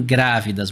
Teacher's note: a gente tem como sílaba tônica para gente aqui a antepenúltima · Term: proparoxítona